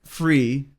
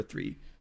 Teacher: you may hear like free but they're talking about the number three